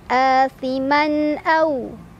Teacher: Minhum athiman. Man ada izhar halki karena ada tanwin fathah bertemu huruf hamzah yang a. Cara bacanya, tanwin dibaca jelas.